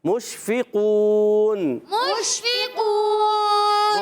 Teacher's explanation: تفشی ایک صفت ہوتی ہے منہ میں آواز کا پھیلنا. اس کا مخرج شین کا وسط زبان، وسط تالو، زبان کا درمیان، تالو کا درمیان، مگر منہ میں آواز پھیلے